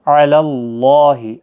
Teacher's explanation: اللہ کا لام زبر کی وجہ سے پر پڑھا جائے گا